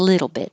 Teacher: hold the t bit so you won't hear it